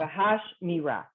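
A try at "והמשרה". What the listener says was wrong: Bahamisra. You keep adding, you keep flipping the mem and the sin a little bit. Bahamisra.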